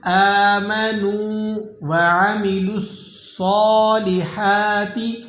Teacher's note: یہ نون کے بعد جو واو ہے یہ واو مدہ ہے، آپ اسے ایک الف تک کھینچ لیں گے۔ آمنوا وعملوا الصالحات، یہاں پر میم کو بعض لوگ کھینچ دیتے ہیں، وعمی اس طریقے سے پڑھتے ہیں، وعملوا الصالحات، یہ درست نہیں ہے، میم کھینچا نہیں جائے گا۔